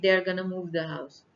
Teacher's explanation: In informal speech, going to is often pronounced gonna. · जल्दी जल्दी में जब गोइंग टू बोलते हैं तो वो गोइंग टू की बजाय गना बोल देते हैं